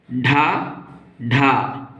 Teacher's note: जिसके उच्चारण में जीभ ऊपर उठकर झटके के साथ नीचे आए उन वर्णों को उत्क्षिप्त कहते हैं।